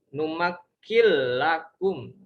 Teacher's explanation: Idgham, tapi dia tidak dengan dengung ya